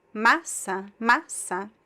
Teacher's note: the second word, massa, the stress is in the first syllable